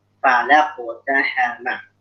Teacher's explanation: Jadi kofnya tebal, pak sama lamnya tipis ya.